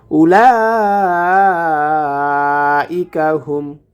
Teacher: লা এখানে 4 আলিফ টেনে পড়ব, কারণ মোটা চিহ্নটি এসেছে, অতএব এখানে আমরা 4 আলিফ টেনে পড়ব।